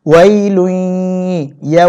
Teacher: গুন্না সহিত উচ্চারণ করতে হয় এবং এটা নাক থেকে উচ্চারণ করতে হবে